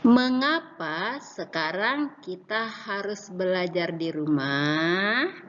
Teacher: Di akhir kata, kita beri tanda tanya ketika diucapkan sedikit mengalun di akhir kata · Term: Kalimat tanya